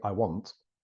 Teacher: if you just say I want well we pronounce the T clearly